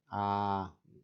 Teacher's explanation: la A es la vocal central abierta. A, uno abre toda la boca al momento de pronunciar la vocal A.